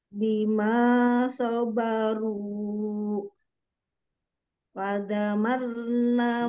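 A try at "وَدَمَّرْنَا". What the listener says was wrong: Mimnya ini, mimnya ada tasjidnya di gunnah musyaddadah kan, tiga lambat. Wadam maruna.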